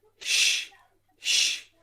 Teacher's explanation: Wish ends in sh, sh, sh is a voiceless sound.